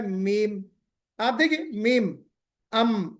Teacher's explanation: دونوں ہونٹوں کے خشک حصے سے، سوکھے سے کیا ادا ہوتا ہے؟ میم